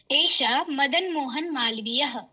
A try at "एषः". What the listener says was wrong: विसर्गस्य उच्चारणं स्पष्टरूपेण करोतु। एषः।